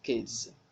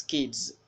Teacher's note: you need to land on the z audibly, because a good listener will know if you pronounce s or z